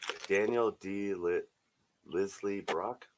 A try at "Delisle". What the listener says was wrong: Daniel Delisle. You don't pronounce the S. So Delisle, French.